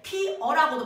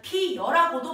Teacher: 자, 예를 들어서 어간 피에 어미 어가 결합할 때 피어가 피여로 소리 나는 경우가 대표적인데, 자, 어간 피에 어미 어가 결합할 때 피어라고도 발음하지만 피여라고도 발음을 한다는 거죠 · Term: 반모음 첨가